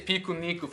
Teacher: We insert an [i] and they insert a [u].